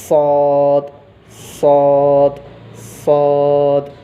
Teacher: सौद में ज़बान को ऊपर के दांतों की जड़ों में लगाकर आवाज़ पूर्ण भी रहना, मोटी भी रहना, और रही बात सीटी की आवाज़ भी आना